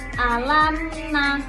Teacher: mim sukun bertemu dengan nun. Jadi hukum bacaannya izhar syafawi artinya [musik] em harus dibaca harus dibaca dengan jelas alamna.